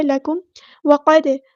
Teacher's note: لکم وقد کان، میم ساکن پر یہاں پہ اظہار شفوی ہوگا، ہم نے کاف باریک پڑھنا، لائٹ لیٹر ہے، لکم وقد، قاف ہمارا ہیوی لیٹر ہے، پورا ادا کریں گے، دال ساکن پہ قلقلہ ہوگا